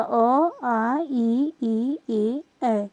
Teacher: ऊपर नीचे खुलेगी यानी कि ओष्ठ की आकृति किसी भी गोलाकार नहीं होगी। वृत्ताकार नहीं होगी। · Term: अवृत्ताकार स्वर